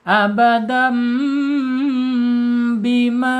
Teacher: maka dibaca asyafatain atau tertutup bibirnya menjadi huruf mim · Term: iqlab